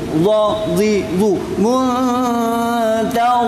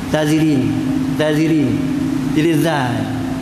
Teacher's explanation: Makhraj ialah tepi hujung lidah angkat ke gigi acip. Za sambil terangkat, sambil terangkat pangkal lidah.